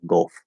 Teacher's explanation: with golf that's going to be an l colored fifth vowel